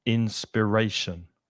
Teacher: the stress is not on the final syllable inspiration on the third syllable